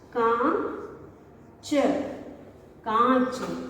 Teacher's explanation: जब भी हम किसी वर्ण पर चंद्रमा के आकार में गोल, आधा गोल बनाकर उस पर बिंदी लगाते हैं, इसे हम चंद्र बिंदु कहते हैं, यानी कि अनुनासिका कहते हैं। वो शब्द जिसके उच्चारण में ध्वनि नाक व मुंह दोनों से आती है उसको हम अनुनासिका कहते हैं।